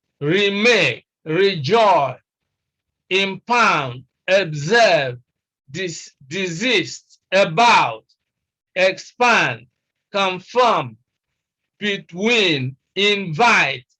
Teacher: you bypass the prefix and you stress the second syllable